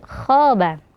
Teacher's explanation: Nah, kho di sini juga dibaca tebal ya. Kho berharokat fathah itu bukan kha ya, tapi kho tebalkan. Khoba ya, bukan khaba tapi khoba.